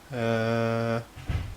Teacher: these vocal cords vibrate making the sound of uh and then the air goes up and the tongue will be at its resting position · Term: Al if